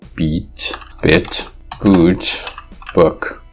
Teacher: when you say boot as opposed to book your muscle is more tense